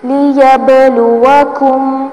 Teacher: با ساکن آ رہا ہے، حروف قلقلہ میں سے ہے تو اس کو ہلا کے پڑھیں گے ، لیبلوکم ایوکم احسن عملا، احسن نون کی پیش کو لمبا